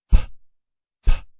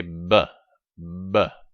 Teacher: when I say p, p, the P sound, there is no vibration. When I say b, b, the B sound, now I have the vibration here in the vocal cord.